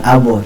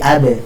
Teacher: Ba-nya itu adalah qalqalah sughra dan ba itu adalah huruf yang tipis, maka jangan abu, tapi abe.